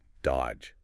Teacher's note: You don't say that middle D at all. It's just dodge. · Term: silent letters